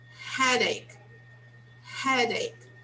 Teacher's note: the stress on the first syllable of the word